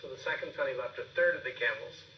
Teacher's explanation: we see a rise and fall as he ends the sentence